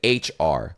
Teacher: ] R bro you're like you know what I'm saying like you're rolling it and hacking it and throwing it out of your mouth from the back of your throat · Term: German R